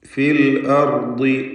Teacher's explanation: റായിന് തഫ്ഖീമാണ്, ദ്വാദിന് തഫ്ഖീം പക്ഷേ കസ്റായതുകൊണ്ട് കുറഞ്ഞ തഫ്ഖീം.